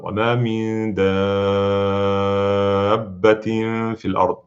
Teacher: The word dabba is little longer, 6 times long. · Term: mad lazim